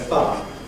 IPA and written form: faə (far)